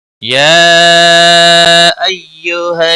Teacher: یا مد منفصل ہے، 3 الف کے برابر کھینچ کر پڑھیں گے